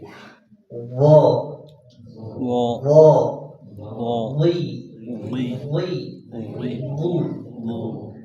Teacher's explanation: huruf wo pangkal lidahnya terangkat dan sebagian besar lidahnya menyempit. Dimulai dari pangkal lidah sampai lidah bagian tengah itu menyempit.